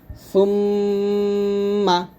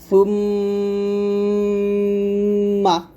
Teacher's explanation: এখানে আমরা গুণ আদায় করব দুই ঠোট মিল করে সুমমা অর্থাৎ দুই ঠোট মিল করে ঠোট থেকে আমরা উচ্চারণটা করব আর উচ্চারণটা আমাদের নাকের বাঁশিতে গিয়ে লাগবে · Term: গুন্না